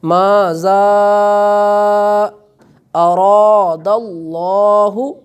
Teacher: اب ماذا ذال کے اوپر مد ہے چونکہ یہ حرف مد ہے اور اس کے بعد حمزہ آ رہا ہے، تو یہ یہاں پر کھینچ کر ادا کیا جائے گا